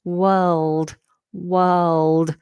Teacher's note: this is a dark L as well so the back of the tongue is high as well